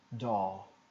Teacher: E aqui é o som de O normal, aberto, door, com R fica door. Se fosse um britânico eu tiraria esse R, door, alongava só o O.